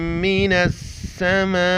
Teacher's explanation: مد ہے، 4 الف کی مقدار کھینچنا ہے